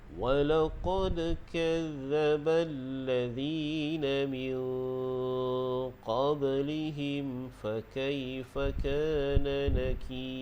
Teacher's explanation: Walaqad, iaitu namanya qalqalah sughra. Dan bila kita waqaf pada nakir dan menjadi mad arid disukun, jadi ra itu dibaca dengan nipis. وَلَقَدْ كَذَّبَ الَّذِينَ مِنْ قَبْلِهِمْ فَكَيْفَ كَانَ نَكِيرِ.